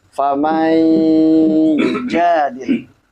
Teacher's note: Naam, famai itu adalah idgham, disebut dengan idgham bi gunnah. Maka cara bacanya itu ditahan ya, minimalnya 3 ketukan.